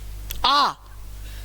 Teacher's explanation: आ को बोलने में मुंह सबसे ज्यादा खुलता है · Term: विवृत स्वर